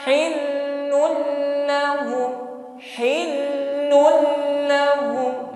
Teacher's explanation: berikutnya lam kedua adalah D tanwin bertemu lam idgham bila ghunna hanya ditekan sekali saja jangan ditahan terlalu lama karena di sini hukumnya la ghunah tidak boleh sampai berdengung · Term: idgham bila gunnah